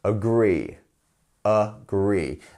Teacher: which of those syllables has the stressed syllable it's the second one